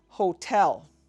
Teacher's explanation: Hoh-TELL with an emphasis on TELL